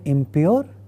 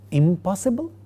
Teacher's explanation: The word impure has the initial sound a labial pa, therefore the negative prefix ends with ma, which happens to be a labial nasal